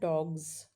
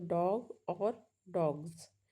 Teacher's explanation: जी जो है वह वॉइस्ड साउंड है। इसमें एक आवाज निकलती है। वाइब्रेशन होता है।